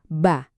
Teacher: buat ngucapin ba, kedua bibir kita kan nempel rapat terus meledak pas dibuka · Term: sifat kolkolah